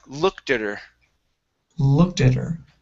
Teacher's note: switch that t to a flat t or a d sound